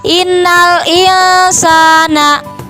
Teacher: karena nun mati bertemu dengan huruf ikhfa yaitu huruf sin, maka dibacanya innal insana